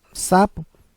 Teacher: a sílaba mais forte é o sa, é uma paroxítona terminada em o, por isso que não é acentuado. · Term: sílaba mais tônica